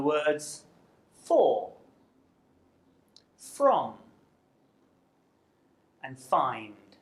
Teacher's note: the F sound is made through the mouth and it's unvoiced which means that you don't use your vocal cord to make the sound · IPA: f/ෆ්